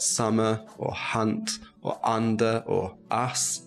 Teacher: we're going to take a little look at the uh sound so this is a short vowel sound technically it's called the open mid back unrounded vowel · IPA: /ʌ/